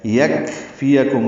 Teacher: یکفیکم کاف ساکن پہ ہمس ہے